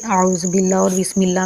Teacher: اعوذ باللہ اور بسم اللہ میں لفظ اللہ کو زیر کی وجہ سے باریک پڑھتے ہیں